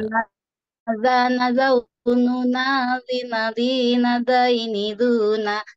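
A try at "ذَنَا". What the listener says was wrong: Cuman huruf nunnya jangan ikut-ikutan makhraj huruf zal ya. Jadi jangan zana zana zaununa. Tapi ah, tetapi tetapi huruf nunnya biasa saja. zana, zana, tapi jangan zana zaununa.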